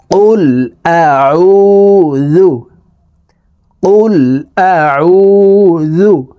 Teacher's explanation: এই আইনের উচ্চারণ হলকের মধ্যখান থেকে চাপ দিয়ে পড়তে হবে কারণ আইনের মাখরাজ হালকের মধ্যখান থেকে হবে